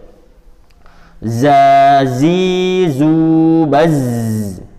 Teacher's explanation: kayak ada suara siulan kecil z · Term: as-sofir